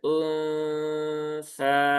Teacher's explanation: ketika mendengungkan nun ya dan menyamarkannya itu posisi lidah sudah mendekati ke makhrajnya huruf sa ya.